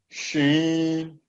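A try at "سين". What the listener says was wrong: Seen. This is seen. Sheen with 3 dots. This without dot. Seen. Yeah, hissing sound. Little hissing sound. Seen.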